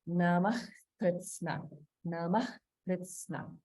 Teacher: So in this section, notice that there's a visarga in Namah Kritsna. So the way we pronounce this visarga is like a sound, like a hard or heavy breathing